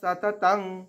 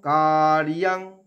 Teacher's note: সততং কার্যং, কার্যং বলবো না, কার রেফের জন্য অর্ধেক র নিয়ে ইয়াং, অন্তস্তকে সংস্কৃততে ইয়া উচ্চারণ হয়। কার্যং এখানে অনুস্বারটা উঙ্গ উচ্চারণ হবে